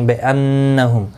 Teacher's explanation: بِأَنَّهُمْ نون مشدد پر گنہ ہوگا، میم کے بعد قوف آیا ہے، اظہار شفوی ہوگا۔